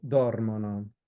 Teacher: it's not accented in the most common accent place for Italian, which is the penultimate syllable. Instead, it's the antepenultimate syllable. So the third from last, or the second from last, sorry.